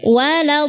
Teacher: Nah, sedikit untuk waladdallin itu ada tasydidnya pada huruf dhad, ditahan dulu.